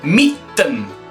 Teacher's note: El primero, DT. La D en este caso no se pronuncia, se pronunciaría como otra T. Por ejemplo, en la palabra mitten.